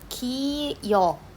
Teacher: 반모음 이에다가 어를 합친 게 이중모음 여였거든요. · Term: 반모음 첨가